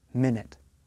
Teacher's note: Minute is a noun. It is a unit of time. The stress is on the first part of the word.